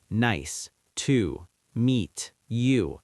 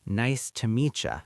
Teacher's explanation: when the T in meet hits the Y in you, it often turns into a ch sound.